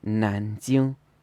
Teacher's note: Nanjing should be 南京, second tone, first tone.